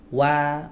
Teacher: sebelum membaca fathah itu bibir sudah maju duluan